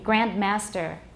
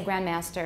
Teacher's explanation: all right i'm being careful so i say the d but in context i might say grandmaster and you don't hear the d at all